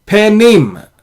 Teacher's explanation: Now why is this pe is not a silent, this is a vocal shwa because it occurs after the silent shwa